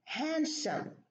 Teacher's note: when we have a D preceded by an N and there is a consonant after it, we delete the D.